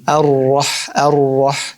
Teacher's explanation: You can hear a little bit of takrar, but you're trying to hide it as much as you can.